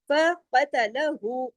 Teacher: काफ मोटा, और हु 2 हरकत वाव मद्दा के बराबर, फकतलहू, तमाम बारीक, बाकी तमाम हुरूफ जो है 1 1 हरकत।